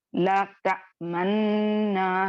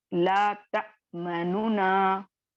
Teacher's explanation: दम्मा को खत्म करके इसको साकिन कर दिया गया, और ये साकिन वाले नून को नूने मुतहर्रिक में मिला दिया गया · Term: इदगाम कबीर